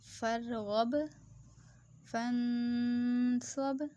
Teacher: اب فن نون ساکن پہ گننا کیوں کیا؟ کیونکہ اس کے آگے حروف ہلکی نہیں ہے تو ہم اس پہ گننا کریں گے